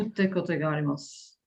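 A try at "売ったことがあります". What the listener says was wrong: But not utte, but utta.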